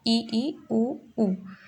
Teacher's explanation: संवृत में आएगा ई, ऊ, मीन्स पूरा क्लोज, जिसमें हमारा जो मुख द्वार है वो लगभग बंद रहता है